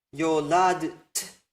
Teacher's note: where you pronounce d and t with no vowel in between. That second t doesn't become a vowel, even though it's difficult to pronounce.